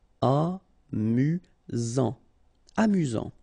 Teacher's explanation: You've got only one S here between the vowels, so it's really this Z sound. Amusant. Amusant.